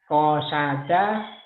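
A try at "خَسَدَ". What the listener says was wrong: Kho, bukan ko. Kho. Khosada.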